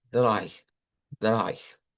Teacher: no es como leído como EI, sino como I, como una I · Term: diptongo